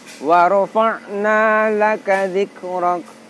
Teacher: pada kaf sukun, itu juga kita dapati sangat terasa bahwa makhrajnya ada di lidah bagian belakang. Kemudian salah satu sifatnya adalah hamas, yaitu mengalirnya nafas. · Kita baca dengan ditekan, ditahan sejenak, kemudian kita tampakkan makhraj dan sifatnya. Terasa makhrajnya ada di tenggorokan bagian tengah, sedangkan salah satu sifatnya dari huruf ain adalah jahr, yaitu tertahannya nafas. Lalu pada dzikrok, pada kaf sukun, itu juga kita dapati sangat terasa bahwa makhrajnya ada di lidah bagian belakang. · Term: ain berharokat sukun